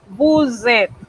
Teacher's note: Usted empareja ese pronombre convirtiendo a la hora de pronunciar esa S del bu en una Z y enseguida usted pronuncia esa E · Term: liaison